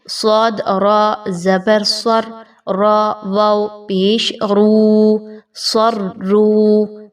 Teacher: صاد بھی موٹا حرف ہے اور را کے اوپر کوئی حرکت آ گئی تو اس را کو بھی پر پڑھا جائے گا